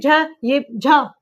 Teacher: हवा हवा ज्यादा निकल रही है तो ये भी महाप्राण